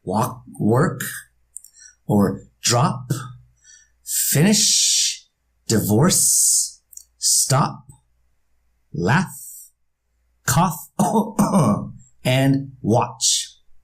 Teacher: You notice how each one of those words ends with the voiceless consonant? So when we add the ED to these words, it's going to be a T sound.